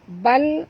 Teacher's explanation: tongkatkan lidah ke langit. Jangan tebal, jangan lantunkan dia.